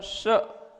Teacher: इसमें सीटी की आवाज आएगी, तालव्य श बोला जाता है